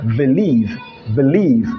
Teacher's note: he replaces the letter b with a letter v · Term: replacing the letter b